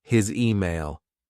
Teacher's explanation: his sounds like a z because of the following vowel in email we also link the words so it sounds sounds like his